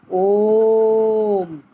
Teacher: इसमें दीर्घ स्वर से भी अधिक अर्थात 3 मात्राओं का समय लगता है। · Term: प्लुत स्वर